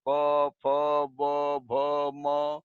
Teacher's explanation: इनका उच्चारण दोनों ओठों से होता है, अतः इन्हें ओष्ठ वर्ण कहते हैं।